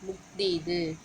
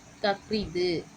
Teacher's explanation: இந்த சொற்கள்ல ஆயுத எழுத்து தனக்குரிய அளவு அரை மாத்திரை அளவுல இருந்து கால் மாத்திரையா குறைந்து ஒலிக்கும் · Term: ஆயுத குறுக்கம்